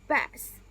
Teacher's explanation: The lips press together and then release into the A as in bad vowel.